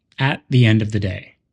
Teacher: here at end and day are stressed this pattern makes English sound smooth and natural if you want